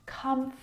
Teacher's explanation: this word, just like vegetable, has an extra vowel in there that we don't need to pronounce.